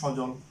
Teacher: এই দন্তস্বর সাথে একটা অ আছে, অর্থাৎ দন্তস্ব প্লাস অ, দন্তস্ব প্লাস অ, এই দন্তস্বর সাথে যে অটা আছে, এরকম যদি সহ অর্থে আসে, যে শব্দ হোক না কেন, এখানে অ এর কোনো বিকৃত রূপ পাওয়া যাবে না, বিকৃত উচ্চারণ করা যাবে না, অর্থাৎ অটা হবে স্বাভাবিক, অর্থাৎ বিবৃত উচ্চারণ